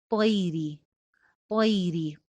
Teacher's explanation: اولم یرو الی الطیر، طیری، طا موٹا حرف ہے، اوپر والے دو دانتوں میں زبان لگے گی اور موٹی ادائیگی ہوگی، آگے یائے لین ہے، طیری، طیری، طا موٹی ہے لیکن آگے سے یا کو موٹا نہیں ہونے دینا، اور گئی کے وزن پہ طی، طی.